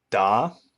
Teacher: uh the line going up like this and this shows you you have to increase or heighten the pitch as you annunciate the a so in Chinese it would be da kind of like if